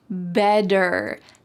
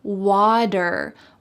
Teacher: In American English, a T that is surrounded by vowels or vowel sounds will change to a D.